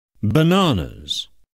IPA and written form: bəˈnɑːnəz (bananas)